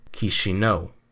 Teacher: it's three syllables key as in Kiosk she as in xingping and no as in no and the emphasis goes on the final syllable